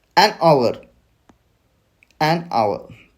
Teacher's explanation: Hour starts with a silent h, vowel sound. यहाँ पे आवर का जो प्रोनाउंसिएशन है उसमें यच साइलेंट है और हमें आवर की तरह वो प्रोनाउंस करना पड़ता है.